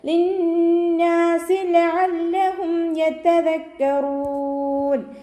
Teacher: അയനിൻ്റെ സൗണ്ടിനെ തൊണ്ടയുടെ മധ്യഭാഗത്ത് നിന്ന് തന്നെ കൊണ്ടുവരിക